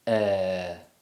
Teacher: several english accents produce the er sound higher and further forward in the mouth and they may have slightly rounded lips